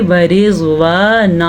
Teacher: اچھا، اگر کوئی اس کو پڑھے گا وارضوان تو وہ وا کو لمبا کر کے غلطی کا مرتکب ہو جائے گا۔ واو کے اوپر زبر ہے تو اس کی مقدار چھوٹی ہے، اسے ہم پڑھیں گے ورضوان۔